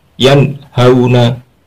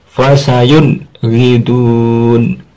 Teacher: Suara nunnya dibaca jelas tanpa dengung. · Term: idhar